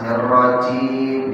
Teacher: Baik, tebalkan qa, jimnya tadi kita sudah masuk ke huruf jim, ya, dijaharkan dengan hamas, mirrajim, ya, wasatul lisan, ya, ketemu dengan langit-langit bagian atas depan.